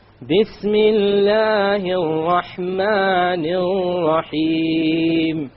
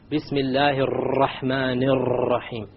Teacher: Notice the 2 R's with the shadda on them in the Rahman. I didn't roll them.